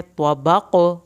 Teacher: अब आखिर में कॉफ पे कलकला हो रहा है